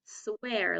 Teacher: it's a long a sound but it's a little bit changed because of the r at the end